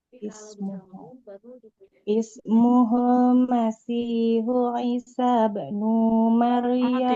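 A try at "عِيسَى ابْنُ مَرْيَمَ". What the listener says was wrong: Tidak Isa. Isa bin, sinnya nggak boleh panjang.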